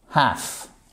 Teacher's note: Alors le L ne se prononce pas.